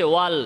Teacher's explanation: আওয়াজটা সামনাসামনি সোজাসুজি না যেয়ে জিহবার আগার দুই সাইড দিয়ে যাবে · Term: লামের